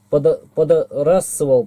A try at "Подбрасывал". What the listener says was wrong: Подбрасывал. Б. Она, видишь, тут съедена.